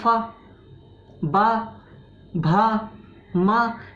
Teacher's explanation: जब तक आपके होंठ आपस में नहीं मिलते तब तक ये आप पा, फा, बा, भा, मा नहीं बोल सकते। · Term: ओष्ठ्य